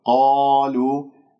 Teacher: كلمة قالوا مفتوحة القاف بعدها ألف مفخمة مرتبة أولى. لدينا مد طبيعي ألف ساكن قبلها مفتوح، قالوا، لا تقل قالوا، لا تكور الشفاه.